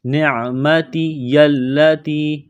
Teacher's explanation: عین گلے کے درمیان سے زور لگا کر عین کو نکالیں گے ، پڑھیں گے، نعمتی التی، تا کو باریک کرنا ہے، یا